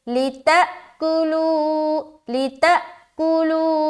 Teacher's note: उसके बाद लितअकुलू, लाम ज़ेर ली, ता हमज़ा ज़बर ता, यहाँ पर फिर क्या करेंगे, झटका देंगे, क्यों, क्योंकि यहाँ पर हमज़ा के ऊपर सुकून आ गया, तो यहाँ पर हम झटका देंगे · कुलू में वाव मद्दा हो रहा है, 1 अलिफ के बराबर खींचना है